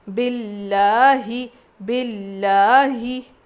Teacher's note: لام پہ تجدید ہے تو سختی کے ساتھ پڑھیں گے اور لام کو باریک پڑھیں گے، زیر آیا ہے نا، لفظ اللہ سے پہلے زیر ہے تو باریک پڑھیں گے۔